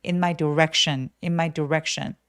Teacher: 그래서 direction 하셔도 되지만 너무 부각되지 않게 강세는 무조건 이음절이 오기 때문에 direction direction이라고 소린 내 주시고 혹은 뭐 c 요런 스펠링들은 발음 찾아보시면 sh의 발음교호를 가지고 있어요. 그래서 direction 하면서 sh처럼 입술을 쭉 내밀어서 해 보세요.